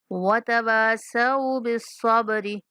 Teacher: واو کے بعد الف مدہ ہے، واو کو کھینچنا ہے